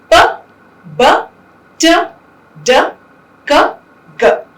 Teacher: there is this pressure that is built up in the oral cavity, and then there is a sudden release, right? So the audible puff of air that is released is called the aspiration. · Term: plosives